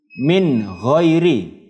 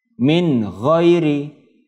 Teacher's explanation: bunyi nun sukunnya jelas. Tidak boleh mendengung.